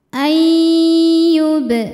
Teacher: Cara bacanya bunyi nun dileburkan ke ya disertai dengung. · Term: idgham bi gunnah